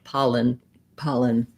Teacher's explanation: thinking about that second syllable being so short my paw is long and my lin syllable is short